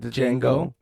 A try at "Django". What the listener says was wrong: I don't like the fact that you just said it with a D.